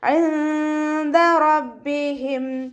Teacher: റോ ഫത്തഹ ആയതുകൊണ്ട് നമ്മൾ ഉയർത്തിയിട്ട് ഉച്ചരിക്കണം. റോ ബാക്ക് ശ്രദ്ധ വന്നു, അപ്പോൾ നമ്മൾ 2 ഹർഫുകൾ ഉച്ചരിക്കുന്ന കനം കൊടുക്കുക.